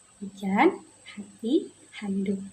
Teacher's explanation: Dalam bahasa Indonesia ini seringkiali bunyi huruf H dihasilkan melalui contohnya hujan hati handuk. sebelum mengucapkan huruf H akan mengeluarkan hembusan nafas pada glotis.